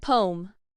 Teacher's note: The American and British pronunciations handle these two syllables differently. In American English, the two syllables are smoothly blended together into a single sound spoken as one syllable and so sounds like poem.